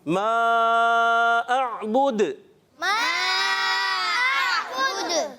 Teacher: دال پر ہم رک جائیں گے تو پھر کیا ہوگا؟ کلکلا ادا کریں.